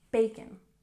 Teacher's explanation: Let's stress the first syllable.